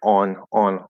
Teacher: it kind of goes through the nose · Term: nasalize the vowel